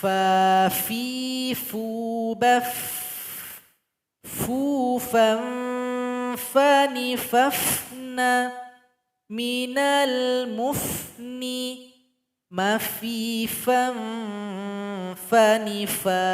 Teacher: tempat keluarnya ujung gigi seri paling atas menempel dengan bibir bawah